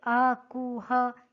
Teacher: अ, कु, ह ये कंठ से बोला जाता है